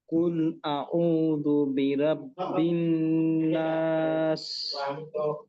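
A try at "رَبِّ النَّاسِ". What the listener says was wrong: এখানে দেখেন তো, রাব্বিন নাস হবে না রব্বিন নাস হবে, কোনটা হবে? রব্বিন নাস হবে। আপনার কিন্তু রাব্বিন নাস হয়ে গেছে, তো এটা খেয়াল করতে হবে। রব্বিন নাস।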